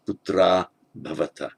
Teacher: And as we know, the visarga putra, nominative plural, sons, you are the sons, bhavata, before the voiced consonant bha, the visarga drops out